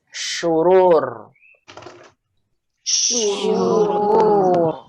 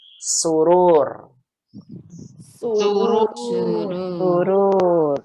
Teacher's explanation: ujung lidah nggak menyentuh nih, shin